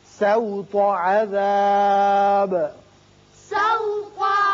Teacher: سین باریک ہوگا، تو کو پر پڑھیں گے